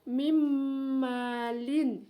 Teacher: Kemudian tertulisannya min malin, bacanya mim malin ya. Huruf nun sukunnya masuk ke dalam, dimasukkan ke huruf mim. Di situ ada nun sukun bertemu dengan huruf mim.